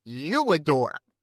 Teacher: Now, you, if it was you and not I, we'd put a W glide in, you adore. Now, there's no W in you adore, but we slip that in to bridge it, to make it go faster.